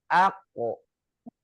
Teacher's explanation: Kalau huruf kof dia pantul, nggak ada aliran nafasnya.